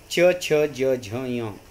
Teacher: तालव्य म्हणजे काय असतं तर आपली जीभ टाळूला लागत असते